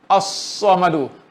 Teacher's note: Dengar sad, maknanya lam tak jelas. Tapi lam tu ada.